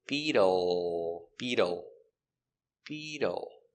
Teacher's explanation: The dark L with a tongue in the back.